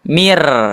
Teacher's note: Tidak dibaca nun sukunnya tapi dibaca huruf selanjutnya yaitu huruf ro.